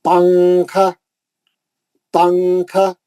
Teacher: نون کو چھپا لے کے اخفا کرتے ہم اردو میں بھی